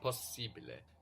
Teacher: We are actually pronouncing both of these S's. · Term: double consonants